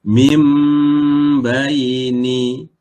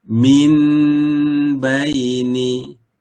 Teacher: huruf nun digantikan dengan huruf mim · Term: iqlab